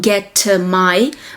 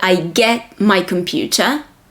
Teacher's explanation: you have the m in my so do not emphasize the T